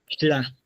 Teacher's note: Ahorita lo que vamos a hacer es hacer una T, pero en lugar de soltar el aire por la punta de la lengua, ta, la vamos a soltar como si fuera una L por los lados. Tla, o sea, en lugar de hacer un solo punto en la puntita de la lengua, ta va a ser por los lados.